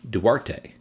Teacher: the emphasis is on the first syllable this is actually a two- syllable word